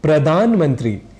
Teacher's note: प्रधानमंत्री को हम असावधानी में प्रधानमंत्री यानी धा की जगह डा यह बोल जाया करते हैं।